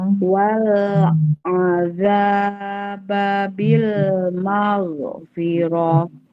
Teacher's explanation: Wal A-nya pendek, za-nya panjang, terus maghfirah pendek karena tidak ada tanda panjang.